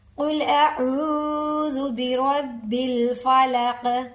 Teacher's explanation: قاف کو حلق سے نکالیں گے، قل نارمل نہیں پڑھیں گے